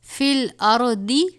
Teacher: را کو بھی یہاں پہ پر پڑھیں گے، را ساکن ہے